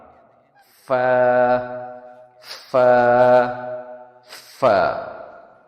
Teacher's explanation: فا کا مخرج ہونٹ، لپس اور اپر ٹیتھ ہیں. یہاں پہ ہم فا نکالنے کے لیے اپنے اپر ٹیتھ کو نیچے والے ہونٹ کے اوپر لگا کر تھوڑا سا پریشر دے کے ہم نکالتے ہیں